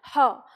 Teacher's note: जब हम इस ह का उच्चारण करते हैं तो आवाज जो है वो कंठ के भीतर से आती है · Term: काकल वर्ण